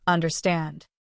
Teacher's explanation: Finally say understand. The stress is at the end.